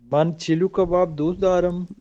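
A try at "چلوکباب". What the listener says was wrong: अच्छा, चिलू नहीं बोलते हैं, ओ पढ़ते हैं। वाव है लेकिन ओ पढ़ते हैं, ठीक है। मैन चेलो कबाब दूसरा, मैन चेलो कबाब दूसरा, ठीक है।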